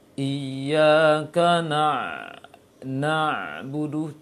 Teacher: Jadi dia ada sifat rakhwah juga, ada sifat syiddah juga, namun tidak total, tidak secara sempurna. Karena itu ain ketika sukun mengalirkan suara sedikit dan juga tertahan sedikit. Iyyaka na'budu, tidak lepas secara pelong dia, secara lepas, secara pelong, namun dia tertahan sedikit. · Huruf ain mempunyai sifat jahar, berarti tidak mengalirkan nafas. Dan ain punya sifat rakhwah, mengalirkan suara. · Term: tawassut